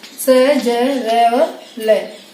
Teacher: जो हमारी जिह्वा है वो दांतों के ठीक पिछले वाले भाग को स्पर्श करती है, वो होते हैं वत्सर्य